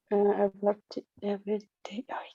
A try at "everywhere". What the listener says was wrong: Close to that one, cercano a eso, pero instead de everyday va a ser everywhere.